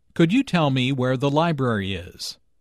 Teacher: Notice that library is stressed here, because it is the word with the important information.